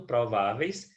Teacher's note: na palavra prováveis nós temos a penúltima sílaba tônica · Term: paroxítona